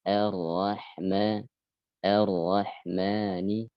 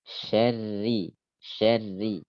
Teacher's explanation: Contoh ketika dibaca dengan tebal, vokalnya seperti vokal O.